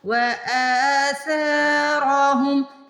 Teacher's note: را کو موٹا پڑھیں گے، را پہ زبر اور پیش آ جائے تو را کو موٹا پڑھتے ہیں